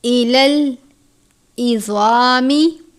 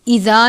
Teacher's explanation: ایلل عظامی، عین کو باریک پڑھتے ہیں، زوا کو پر پڑھتے ہیں، زوا کو آپ نے زا کی طرح نہیں پڑھنا یعنی ایزا نہیں پڑھنا بلکہ عظامی پر کر کے پڑھیں گے کیونکہ زوا حروف مستعلیہ میں سے ہے، وہ حروف جو ہمیشہ اور ہر حالت میں پر پڑھے جاتے ہیں۔